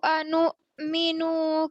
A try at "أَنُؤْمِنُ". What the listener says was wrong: अनुमिनु लंबा नहीं होगा अनुमिनु